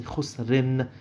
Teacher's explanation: Now, the in bit on that, again, is the same thing. It ends in a ghunna sound